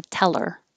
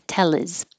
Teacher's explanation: get rid of the H connect it to the vowel after it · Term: H deletion